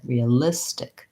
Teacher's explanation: So now I have my relaxed I vowel. So I don't want to have another tense E like the beginning of the word. I want a more relaxed I, realistic.